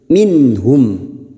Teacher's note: nun sukun dibaca jelas tanpa mendengung